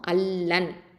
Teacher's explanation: நூன் சாக்கினாக்கு அடுத்த எழுத்து லாம் இருக்கிறதுனால இங்கே வந்து என்ன சட்டம் அப்படின்னு பார்த்தீங்கன்னா, இதகாம் பிலா குன்னா இல்லைனா இதகாம் கயிறு குன்னா. இந்த குன்னா இல்லாமல் அப்படியே இணைச்சிருவோம். அல்லன். ஓகே, அல்லன். இந்த லாமோட இந்த நூன் வந்து நுழைஞ்சிருச்சு.